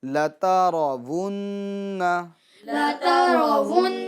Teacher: جھٹکا دے کے چھوڑے گے نہیں، کیونکہ حرکت ہے نون پر